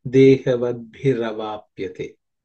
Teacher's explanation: Dehavad bihi and avapyate. Bihi, that visarga, becomes ir again. So that ir plus a becomes ra. So you get dehavad bhiravapyate.